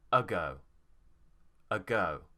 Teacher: my tongue is central it's just in the middle of my mouth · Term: schwa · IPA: ə